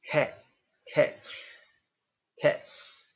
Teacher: the final sound of cat is T it's a voiceless sound then we have voiceless s